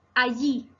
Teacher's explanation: palabra aguda, que se acentúa en la última sílaba